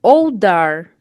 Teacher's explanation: Temos a palavra old, terminou com som de consoante e a próxima palavra começou com som de vogal.